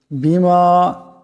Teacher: মিমকে এক আলিফ পরিমাণ লম্বা করে পড়তে হবে